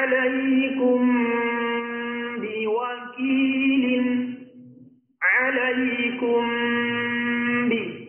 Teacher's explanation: Maka cara bacanya mesti didengungkan dengan kadar 2 harokat. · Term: ikhfa syafawi